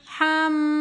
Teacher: میم مشدد ہے تو یہاں پر ہم غنہ کریں گے